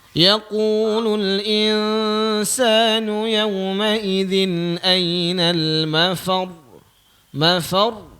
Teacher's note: Kalau kita tengok dekat huruf ra tu di hujung tu ada tasydid kan? Okey, jadi bila dia waqaf, huruf yang terakhir itu ada tasydid, kita kena tekan sikit.